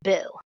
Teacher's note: That B is a stop, B, and then it has your vowel.